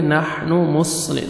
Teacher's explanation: انما نحن حا کو اچھی طرح ادا کریں گے، نحن مصلح صاد کو موٹا کر کے پڑھیں گے